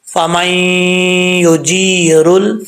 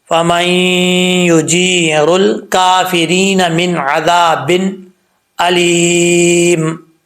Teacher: را کے اوپر پیش ہو تو را پر پڑھا جاتا ہے